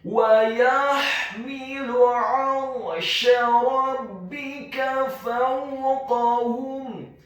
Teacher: Kata fawqahum, huruf fa-nya dibaca fathah 1 harokat, huruf waw-nya dibaca sukun dengan posisi mulut kita agak tertutup dan dengan gerakan yang agak cepat. Kemudian huruf kaf-nya dibaca tafkhim, tebal, fathah 1 harokat, huruf ha-nya dibaca tafkhim, tebal, dhammah 1 harokat.